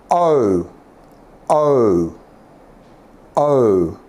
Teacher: see my lips going from an oval shape to a round shape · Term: diphthong sound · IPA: /əʊ/